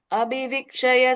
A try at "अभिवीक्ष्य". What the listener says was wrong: Second and third line, the Divya and the Vikshya, both of them are half sha. Okay, it's Abhivikshya. I think you are saying full ksha there.